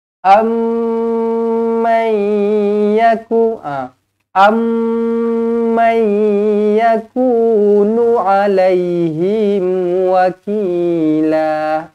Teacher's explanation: Mim kosong bertemu dengan mim sabdu idgham mithlain saghir dengan 2 harakat.